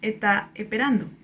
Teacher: hay una aspiración de la S si está al final de la sílaba